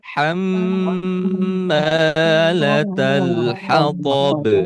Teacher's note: yang bertasydidnya di huruf mim, maka di sini dibacanya ditahan, ya.